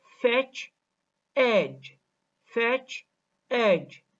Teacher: For example, fetch and edge. The vowel e, in the word edge is longer than the vowel e in the word fetch.